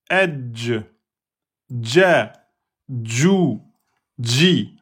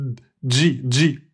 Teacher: le premier contact pour la lettre Jim, c'est la lettre D.